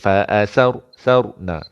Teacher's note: ra ni tanda sukun tapi sebelumnya baris atas maka kena tebal. Mulut ke depan sikit.